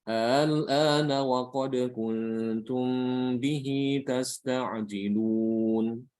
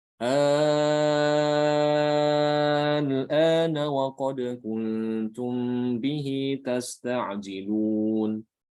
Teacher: dengan mengucapkan hamzah yang kedua dibaca antara hamzah dengan alif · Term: tashil